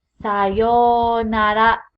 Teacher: after me again konichiwa next konbanwa again konbanwa goodbye is sayonara a double vowel right there you're just gonna elongate that first vowel sound